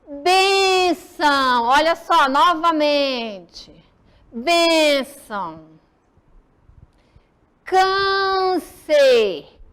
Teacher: O som é fechado, ok? Não é aberto como o agudo.